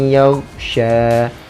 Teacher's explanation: Lagi sambungnya ada juga nu'asan yaghsha, nampak tak, tanwin jumpa dengan ya, dengungkan dua harakat, kita gabungkan antara tanwin dengan ya, yaghsha. Lagi ada lagi ta'ifatan minkum, nampak tak, tanwin dengan mim dah masuk, tam minkum. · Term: idgham bi gunnah